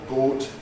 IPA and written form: goːt (goat)